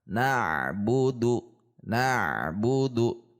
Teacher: Qalqalah juga jika di tengah dia harus menyambung dengan huruf di depannya, sehingga antara a-bu, na-bu, antara ain sukun dan bu ini tersambung, tidak terpisah